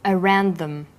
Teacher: The final d sound in around is similar in pronunciation to the first sound in the word them.